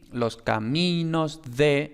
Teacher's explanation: la D es aproximante porque está en contexto de que sea aproximante, es decir, no va justo detrás de pausa, no va justo detrás de nasal, no va justo detrás de L. Y simplemente tanto la preposición como el artículo definido son átonos, por tanto el acento no llega hasta montes.